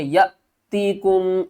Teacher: حمزہ ساکنہ جھٹکے کے ساتھ پڑھیں گے